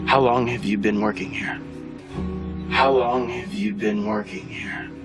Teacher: Here we're going to have our falling intonation in this question.